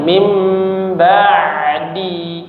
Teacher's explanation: Huruf ain harusnya bainiah atau tawassud ya, bukan syiddah, bukan seperti hamzah. Kalau kita baca putus mim ba'di.